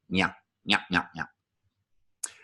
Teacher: That means that the N will have a little body English to it, nya. So you press the middle of your tongue onto the middle of the roof of your mouth and then do kind of a Curly from the Three Stooges thing, nya, nya, nya, nya.